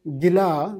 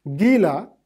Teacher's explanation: gila swallowed has major stress on the last syllable whereas gila wet has on the first syllable